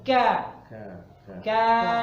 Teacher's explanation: jadi lidahnya mepet ke langit-langit lunak dan kasar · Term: Kaf